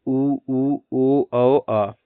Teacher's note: ओष्ठ की आकृति के आधार पर वृत्त मुखी आवृत्तमुखी होंठ गोल हो जाते हैं